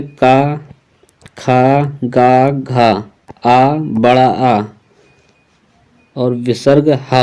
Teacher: कंठ से का, खा, गा, घा, आ, बड़ा आ और विसर्ग हा बोला जाता है।